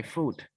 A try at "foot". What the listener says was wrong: foot. Okay, we don't pronounce food, we pronounce foot. Food is confused with something you can eat. So this one we pronounce foot.